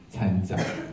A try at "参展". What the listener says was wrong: 参 展 ， 你 可 以 卷 舌 吗 ？ 参 展 。